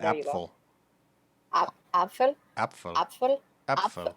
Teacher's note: to go from like the plosive P to the sort of unvoiced fricative after that is sort of weird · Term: P followed by an F